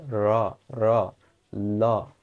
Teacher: দাঁতের যে গোড়ালি সেই জায়গায় জীব গিয়ে টাচ করে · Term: দন্তমূলীয়